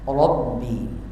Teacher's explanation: ini ada ra barisnya fathah, maka ini hukum ra adalah tafkhim, bacanya tebal